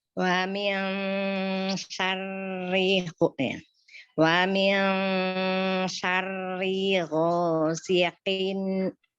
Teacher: Gho-nya dia pakai isti'la, angkat pangkal lidahnya.